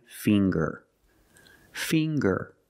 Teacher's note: we see the nasal sound plus the hard G